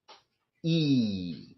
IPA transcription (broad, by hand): i: